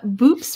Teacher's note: with the unvoiced p at the end